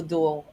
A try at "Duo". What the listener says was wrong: Duo. You and Anthony both from Queens say it sounds like dual, like you have swords. You picked that up at Selmer.